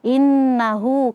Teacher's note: Oke, yang terakhir innahu in ada nun yang bertasydid. Maka di sini ada ghunah musyaddadah kita baca dua harakat.